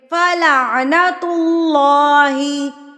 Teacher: فلعنت اللہ، پیچھے ہم نے پڑھا کہ اللہ سے پہلے اگر زیر آ جاتی ہے تو ہم اس اللہ کو باریک پڑھتے ہیں، لیکن یہاں پر اللہ سے پہلے پیش آ گئی ہے تو اس اللہ کو ہم پر پڑھیں گے. کیسے پڑھیں گے؟ موٹا کر کے پڑھیں گے